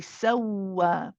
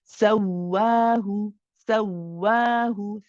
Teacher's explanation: we have to emphasize that the sin and the waw are actually joint. It's very easy to make it sound like they are not joint together and say sawahu, for example. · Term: waw mushaddad